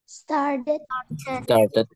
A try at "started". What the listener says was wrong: Nice. Okay. You can say it like American, started, with D, started.